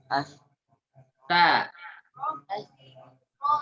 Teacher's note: Ujung lidah bertemu dengan dua gigi seri atas ujung. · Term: huruf ta